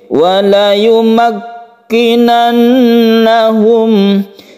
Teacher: Ini tasydid kaf. Tasydid kaf itu tidak mengandung sifat hamas yang menghembuskan nafas ketika kita membaca sukun kaf tersebut.